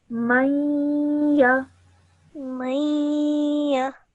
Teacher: This next example, you have a noon sakin followed by a ya mushaddad. Again, you would produce a nasal sound whilst you join the meme onto the ya.